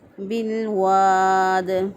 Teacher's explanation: با کو لام کے ساتھ ملا دیا، لام ساکن تھا، ساکن حرف پیچھے والے زبر زیر پیش والے حرف کے ساتھ ملتا ہے، اسی طرح با کے ساتھ الف کے ساتھ پھر اس طرح سے نہیں ملا بلکہ با کے زیر کے ساتھ ملا۔